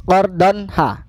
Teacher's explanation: ini adalah izhar, jelas n-nya bunyinya jelas.